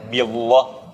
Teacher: Kalau harakat sebelumnya kasrah itu baru kita tipiskan di lafzul jalalahnya.